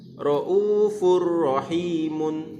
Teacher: ada tanwin bertemu dengan ra, dibaca tanpa dengung. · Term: idgham bila gunnah